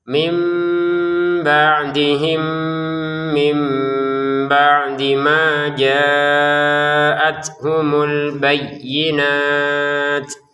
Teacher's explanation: ba'dihim mim sukun bertemu mim dibaca dengan dengungan ya, dimasukkan kepada mim yang kedua. Kemudian ada nun sukun lagi ya bertemu dengan ba, maka dibacanya mim.